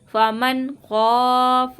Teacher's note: نون ساکن کے بعد خوا آ رہا ہے، اظہار کا قاعدہ ہے، گنہ نہیں ہوگا یہاں پہ